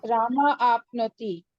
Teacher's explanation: Here the Visarga sound will drop down and the last one. So you will drop the Visarga sound, but both the words should be heard. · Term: Visarga Sandhi